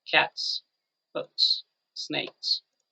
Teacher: and you repeat only the last sound so there's nothing here you feel nothing there is no vibration your vocal chords are not vibrating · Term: voiceless sound